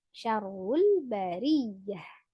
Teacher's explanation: Ada ro tasdid, hati-hati didobelkan, kemudian ya tasdidnya juga ditekan ya.